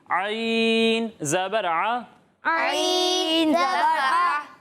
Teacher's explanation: عین جو ہے وہ حلق کے درمیان والے حصے سے ادا ہوتا ہے